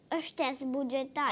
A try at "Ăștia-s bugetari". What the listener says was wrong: Ai o problemă cu litera Ș? Ia zi Ș. Dar de ce S e așa? Ai o problemă cu... Cu dinții. Bă, că ți-au căzut vreo doi dinți acolo de jos.